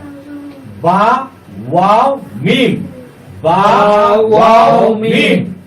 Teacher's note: দুই ঠোঁটের মধ্যস্থল হইতে পড়া হয় বা ওয়াও মিম। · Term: 15 নম্বর মাকরাজ